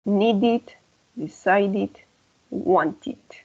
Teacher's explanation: Cuando termina en D o T, la ED va a sonar como una IT.